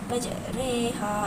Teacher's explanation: Dari segi istilahnya pula, menyembunyikan huruf ra antara alif dengan ya atau mencondongkan bacaan harakat fathah kepada harakat kasrah sekitar 2/3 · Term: imalah